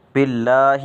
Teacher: لفظ اللہ کو باریک پڑھیں گے، کیونکہ اس سے پہلے زیر آ جائے تو لفظ اللہ کو باریک پڑھا جاتا ہے